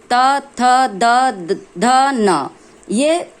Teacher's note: त वर्ग त, थ, द, ध, न, ये ध्वनियां दांत को स्पर्श करती है।